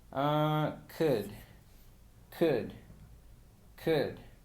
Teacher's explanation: Entonces sería k y pasamos directamente al sonido d. Así que esta palabra sonaría como could, could, could. · al verbo modal could no se le pronuncia la L. La L es una letra muda, así que pasamos directamente del sonido de k.